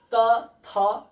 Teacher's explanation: आपका जीभ जो है वो दोनों दांतों के बीच में आता है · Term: दंत वर्ग